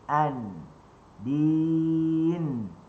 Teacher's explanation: Nun dekat mana? Hujung lidah di langit. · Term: makhraj nun